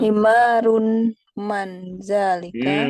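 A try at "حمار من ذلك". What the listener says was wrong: Nggak pakai tanwin, Bu. Himaruman. Himaruman.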